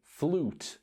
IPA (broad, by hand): fluːt